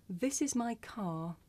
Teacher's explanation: in the first sentence this is my car you don't hear the r sound because it's at the end of the sentence